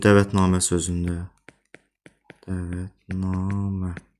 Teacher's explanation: dəvətnamə, burada da həm ə saiti, həm də a saiti uzanır.